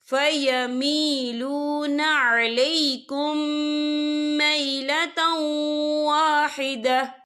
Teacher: ہم پچھلے میم کو اگلے میم میں مدغم کریں گے اور ہم یہاں غنہ بھی کریں گے۔ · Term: ادغام شفوی